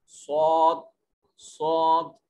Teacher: یہ موٹا کر کے پڑھا جائے گا اور منہ کو گول کر کے ادا کیا جائے گا یہ حرف صاد